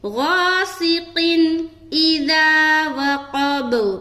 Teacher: قن اذا وقب اب یہاں دیکھیے قاف کے نیچے دو زیر کی تنوین ہے. دو زیر کی تنوین کے بعد حمزہ آ گیا, لہذا یہاں پر اظہار کریں گے